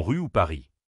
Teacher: En français, il se fait au fond de la gorge, pas avec la langue. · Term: le son R